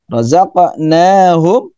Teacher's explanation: Razaq qalqalah, pantulkan dulu sedikit. Qalqalah sughra.